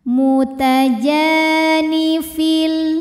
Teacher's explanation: Hukumnya adalah mad tabi'i zahiri sebab ada alif yang didahului baris fathah. Maka dibacanya panjang 2 harokat jimnya.